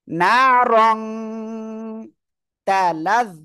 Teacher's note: ইকফার অক্ষর না তাহলে কি করবেন নাকের ভিতরে নিয়ে গুন্না করবেন নারন এটা না বলে এখানে অনুস্বারের মত উচ্চারণ হবে